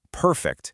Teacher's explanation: If you put the stress on the first syllable, perfect, it's an adjective